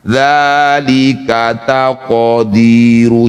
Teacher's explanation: Jadi bunyi qof tetap memantul bukan dihidupkan. Dalika taqiru jangan taqo. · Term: qalqalah sugro